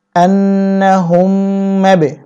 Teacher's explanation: হা মিম পেশ হুম, মিম বা জবর মাবে, আন্নাহুম মাবে, বাতে কলকলা করতে হবে